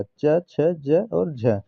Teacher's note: तालव्य व्यंजन जो ताल के द्वारा बोले जाते हैं। तो तालव्य व्यंजन के अंतर्गत च वर्ग आता है। · च वर्ग जो है तालव्य के द्वारा बोला जाता है